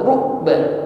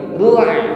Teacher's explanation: sebagian bunyi huruf ain ini masih ngalir, tidak putus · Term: tawassut